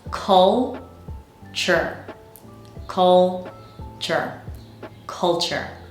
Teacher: The second syllable is the relaxed syllable, meaning it has a schwa.